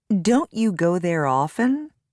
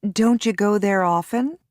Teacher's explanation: notice the reduced sounds of don't and did when followed by you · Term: reduction of don't and did